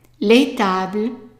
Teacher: we're not pronouncing the S at the end. The S of plural is silent.